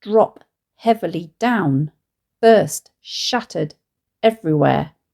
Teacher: where the first 3 iambs are substituted with a spondee, dum dum, an anapaest, dididum, and another spondee, dum dum. The result is that the line sounds very heavy.